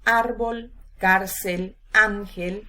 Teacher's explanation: no llevan tilde el siguiente grupo de palabras dianas o graves son las que llevan la intensidad de la voz en la penúltima sílaba recordamos que no todas van a llevar acento ortográfico cuando no